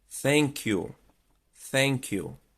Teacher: quase como se fosse um assopro você vai colocar a língua lá nos dois dentinhos de cima